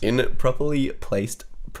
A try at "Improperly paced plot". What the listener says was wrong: It's not placed plot, it's paced plot.